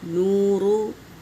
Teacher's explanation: واو ساکن سے پہلے پیش تو واو مدہ، اسے ایک الف کے برابر کھینچیں گے۔ نون واو پیش نو، ہا ہوا کے ساتھ نکالیں گے، ہا پیش ہو، نو ہو، تو پر ہے اسے پر پڑھیں گے، تو واو پیش تو، رو بھی پر ہے، رو پیش رو، تو رو، تا واو پیش تو، با واو پیش بو، دونوں کو برابر کھینچیں گے، تو بو۔